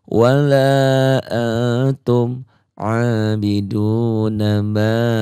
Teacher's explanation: Du-nya ini mad tabi'i 2 harokat, panjangnya 1 alif. Nanya kosor pendek, ma-nya mad jaiz munfasil.